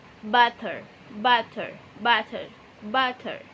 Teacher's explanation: lidah Anda bertemu dengan ujung lidah Anda butter butter butter butter dan ada ketukan yang sangat cepat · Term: Flap